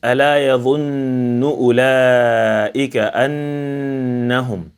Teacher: you will feel that the sound of the Ghunnah comes from one's nose